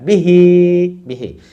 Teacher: দেন বি হি, বি তাড়াতাড়ি, হিতে টান, বিহি বিহি।